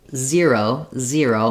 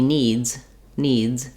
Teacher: you can hear how my Z is a voiced sound but it turns into a voiceless at the end